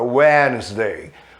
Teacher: Esse D é mudo nessa palavra, Wednesday, quarta-feira.